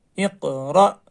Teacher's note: حمزہ ساکنہ کے پڑھنے میں جھٹکا ہوتا ہے